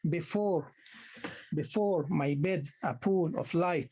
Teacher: The first is unstressed, the first syllable is unstressed, the second syllable is stressed. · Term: iambic tetrameter